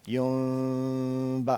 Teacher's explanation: جہاں پہ نون آتی ہے ساکن, اس کے بعد اگر با آ جاتا ہے تو ہم اس کو اقلاب کے ساتھ یعنی اس کی آواز کو بدلتے ہوئے میم میں بدلتے ہیں, لیکن ہونٹوں میں تھوڑا گیپ رکھتے ہیں